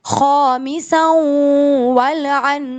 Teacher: لیکن آپ کو معلوم ہے تنوین کے بعد واو آیا جو کہ یمون کی فیملی میں سے ہے، تو ہم نون کے ساؤنڈ کو اسکپ کریں گے، واو کو پک کریں گے اور کریں گے غنہ